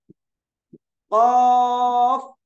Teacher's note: जबान की जड़ और परजीभ के अंदर से एक हर्फ कौफ निकलता है